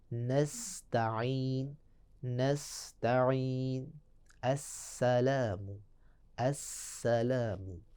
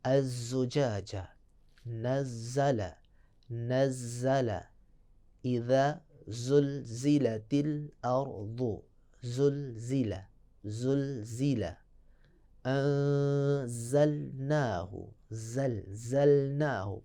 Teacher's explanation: یعنی دیکھیں سیٹی کی آواز، تو لہذا یہ جو تین حروف ہیں صاد، سین، زا، اس میں صفت صفیہ پائی جائے گی